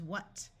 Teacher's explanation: wh has the sound of w in most of the United States